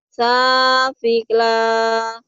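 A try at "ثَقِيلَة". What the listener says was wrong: Bukan fi tapi ki. Sakila. Sakila.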